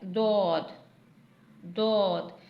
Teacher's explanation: डोद जबान की करवट और ऊपर वाली दाढ़ों की जड़ से अदा होता है। यानी जबान की करवट यानी जबान की साइड एक साइड ऊपर की दाढ़ों से जाके लगती है तो दोद अदा होता है।